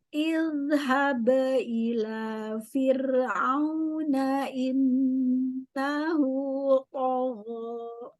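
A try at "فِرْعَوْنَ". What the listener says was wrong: Nah, kurangi takrir ro-nya coba. Fir. Fir'aun.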